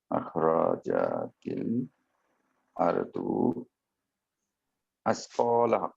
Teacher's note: ক তে টান হবে একালিফ এবং লাহা হাতে টান হবে এক আলিফ